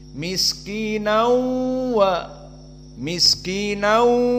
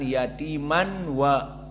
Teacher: selain idgham maknanya nun dakhala ala wawi dibaca nau, maka juga di saat dibaca wau dalam keadaan gunnah nau wa yatima, maka di sini dua harokat dan juga makhrajnya dari khaisum, miskinau wa miskinau, maka keluar dari hidung. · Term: idgham bi gunnah